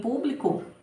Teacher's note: o pu é a minha sílaba tônica mais forte